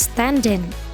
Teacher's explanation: Yang pertama, ketika konsonan bertemu dengan vowel. Nah, ketika ada konsonan bertemu dengan vowel, contohnya pada kata stand in. Nah, itu digabung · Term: word connection